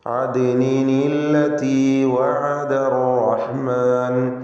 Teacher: അദ്നിൻ എന്ന തൻവീനിൽ ഉച്ചരിക്കപ്പെടുന്ന സുക്കൂൻ, അന്ത്യത്തിലുള്ള ഉച്ചാരണത്തിലെ സുക്കൂൻ, അല്ലത്തിയിലെ ഉച്ചാരണത്തിൽ വരുന്ന ലാമിൻ്റെ സുക്കൂൻ, ഇതിന് പരിഹാരമായിക്കൊണ്ട് നൂനിൻ്റെ സുക്കൂൻ മാറ്റി കസ്റാക്കുന്നു. അദ്നിൻ എന്ന ഉച്ചരിക്കപ്പെടുന്ന സാക്കിനത്തായ നൂനിന് കസ്ർ കൊടുക്കുക. എന്നിട്ട് അദ്നിനില്ലതി.